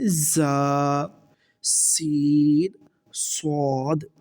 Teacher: ان 3 حروف کو ادا کرتے وقت سیٹی کی طرح تیز آواز نکلتی ہے، اس لیے ان حروف کو حروف صفیریہ یعنی سیٹی والے حروف کہتے ہیں، سیٹی والے حروف کہتے ہیں۔